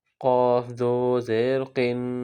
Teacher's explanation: اب یہاں موٹا قاف ہے، بڑا قاف، موٹا پڑھیں گے اس کو۔ قاف دو زیر قن، تنوین ہے، اخفا کریں گے